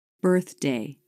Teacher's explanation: Keep in mind, when you only stick the very tip of your tongue out, the movement into other sounds isn't as hard as you might think. Watch the tongue tip come in and flip up for the D.